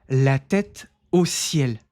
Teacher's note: Esse o a gente não pronuncia como au, não. Esse o é sempre o som de um o.